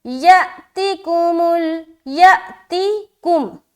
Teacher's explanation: یا میں ہم حمزہ ساکینہ کا جھٹکا کریں کیونکہ یہاں پر دیکھیے حمزہ ہے نا، اس کے اوپر علامت آ گئی.